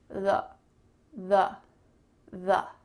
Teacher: So make sure you say th. And then there's a vowel sound after that. It's called the schwa sound. It kind of sounds like a short U.